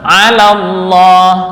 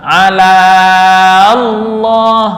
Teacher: Jadi gugur karena bertemu hamzah wasal yang juga gugur ketika dilanjutkan bacaannya bukan diwakafkan. Sehingga bertemulah alif mad dengan lam bertasydid. Ini ala langsung masuk ke lam bertasydid. Allah menjadi alallah yang awalnya sukun.